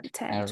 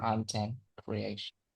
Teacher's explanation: We stress on the first syllable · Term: first stress